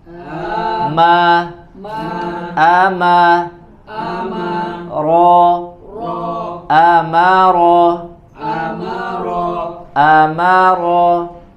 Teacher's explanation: ada huruf yang dibaca tebal adalah huruf ro ya maka disempurnakan ketebalannya